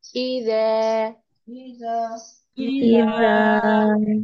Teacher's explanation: زبان کی نوک اوپر کے سامنے کے دانتوں کے سروں سے ٹچ کرے گی، سافٹ نو بزنگ ساؤنڈ، وہی اس میں سیٹی کی آواز نہیں ہے، بہت ہی نرمی سے ادا ہوتا ہے۔